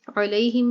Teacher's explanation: یا ساکن ہے اور اس سے پیچھے زبر ہے، تو یہاں پر یا لین ہو رہا ہے اور لمبا اس کو نہیں کریں گے